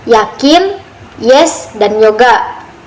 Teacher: bunyi J dihasilkan ketika lidah mendekati langit-langit keras atau palatum tanpa menyentuh sepenuhnya sehingga menghasilkan aliran udara sempit namun tidak tertutup seperti pada konsonan sejati. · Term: konsonan aproksiman palatal bersuara